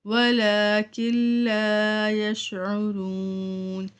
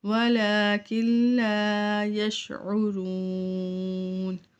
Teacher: نون ساکن ہے اس کے بعد لام آ رہا ہے اس لیے ہم نون کو نہیں پڑھیں گے بلکہ کاف کو لام سے ڈائریکٹ ملائیں گے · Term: ادغام بلا غنہ